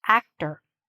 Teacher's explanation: Even though you see an OR, we don't say OR. We're shortening it, okay? There's a schwa there. Actor. So the stress is here, and this is shortened, reduced.